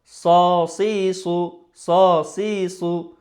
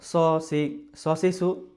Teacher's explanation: একটু কি জিহ্বার গোড়াটা উপরের দিকে ওঠাবে, তখন আওয়াজটা ভারী হবে, মোটা হবে। সো আবার যদি এরকম বলা হয় যেমন শুধু স, সি, স, সি, সু, তাহলে কিন্তু হচ্ছে না, মোটা হয় নাই কিন্তু। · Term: মোটা হরফ